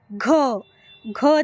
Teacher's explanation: घ देखील उच्चारत असताना हवा जोराने बाहेर येते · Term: महाप्राण